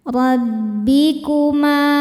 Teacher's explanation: Huruf ra dibaca secara tafhim karena berharakat di atas. Cara bacanya ditebalkan. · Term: tafkhim